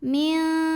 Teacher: Nun sukun tidak dibunyikan jelas N, bukan min, melainkan samar-samar. Jadi kita siap-siap menuju huruf kaf. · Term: ikhfa hakiki